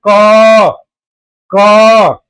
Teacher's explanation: जब आप मुंह से बोलते हैं क तो अ आ रहा है पीछे। तो अ आ रहा है पीछे।